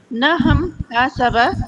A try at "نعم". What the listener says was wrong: نہم نہیں، نعم، آئین. نا آئین کو آئین نہیں پڑھتی، آپ آئین کو ہا پڑھ جاتی ہیں.